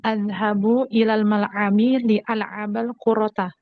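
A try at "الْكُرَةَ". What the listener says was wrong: Ya, kurota. Tanpa tasdid ya. kurota.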